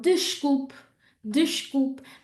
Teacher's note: There's a really good example of the sh when we have vowel S consonant and of that closed E